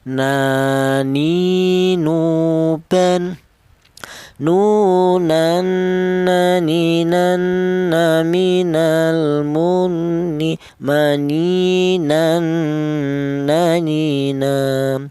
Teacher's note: Huruf nun keluarnya huruf berasal dari ujung lidah menyentuh langit-langit mulut.